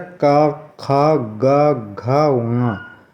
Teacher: इसमें सब में जीभ जो है हमारी कंठ में लग रही है। कंठ में का गले से बोले जा रहे हैं। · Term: कंठ व्यंजन